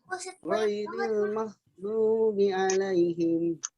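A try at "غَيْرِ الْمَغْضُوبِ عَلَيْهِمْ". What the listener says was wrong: Bukan mal, tapi panjangkan, nyambung ke Bu. Maghdubi.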